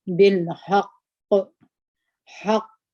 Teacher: دا قاف موږ تاسې ساکن کوي دلته مو غټه قلقله وکړه